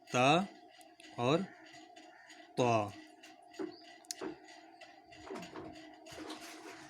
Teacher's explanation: زبان کی نوک کو اوپر والے دانتوں کی جڑوں سے ملا کر ادا کرتے ہیں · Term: مخرج